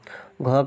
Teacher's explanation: घ का उच्चारण स्थान जो होता है कंठय होता है